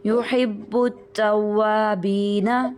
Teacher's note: یحب ال کریں گے تو ہم لام کے ساتھ ملائیں گے لام کے ساتھ نہیں ملانا با کو ڈائریکٹ تا کے ساتھ ملانا ہے